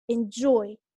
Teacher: with two syllables the second syllable is stressed